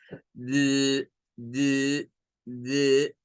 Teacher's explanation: la letra d es un ejemplo de una consonante con vibración